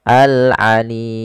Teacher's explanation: untuk pembacaan mad arid lisukun sendiri kita boleh memanjangkan 2, 4 atau 6 harokat. Maka boleh kita baca wa huwal khallaqul alim, 2 harokat atau al-alim 4 harokat, atau boleh pula 6 harokat al-alim.